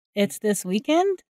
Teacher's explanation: Instead, here we are using the same word order, but adding rising intonation to clarify we heard correctly